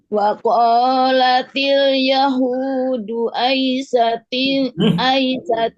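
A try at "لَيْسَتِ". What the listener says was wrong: Itu lai, bukan ai, lai.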